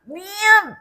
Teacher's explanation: 미음은 비음이다. 비강을 올려서 나오는 소리이기 때문에 코를 막았을 때 소리가 제대로 나오지가 않습니다